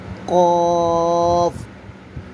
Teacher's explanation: زبان کی جڑ اور تالوں کے نرم حصے سے ادا ہوتا ہے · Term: حروف لہویہ